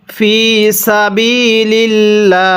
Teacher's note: আল্লাহ শব্দের পূর্বে যদি এরকম জের থাকে তাহলে এই আল্লাহ শব্দটিকে চিকন করে পড়তে হবে।